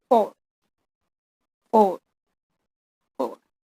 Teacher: F sound is fricative voiceless on labiodental labial place.